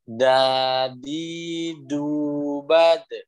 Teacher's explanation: Huruf dal itu adalah tadi ujung lidah bertemu tempat tumbuhnya gigi seri atas. Kalau misalkan ini gigi seri atas, ini gusi kita, nah ke tengah-tengahnya.